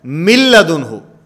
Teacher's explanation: ادغام تو ہوگا لیکن یہاں پر غنہ نہیں ہوگا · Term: ادغام بلا غنہ